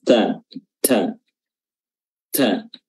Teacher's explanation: ujung lidah bertemu dengan ee pangkal gigi seri atas ta ta ta ya disertai dengan sifat hams yang sifat yang mengeluarkan udara atau nafas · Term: huruf ta